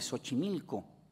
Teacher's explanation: reproduce el fonema fricativo sordo del grafema S